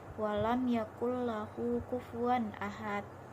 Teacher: Di sini nun sukun bertemu dengan huruf lam, maka dibaca tanpa mendengung. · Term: idgham bila gunnah